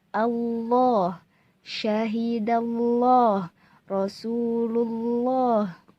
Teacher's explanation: allah bukan allah hai kalau allah jadinya tarqiq dan itu salah cara bacanya yang betul adalah tafkhim dengan kita menebalkan huruf lam